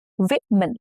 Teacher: Now the rule is O changes to a short I sound and the stress is on the first syllable.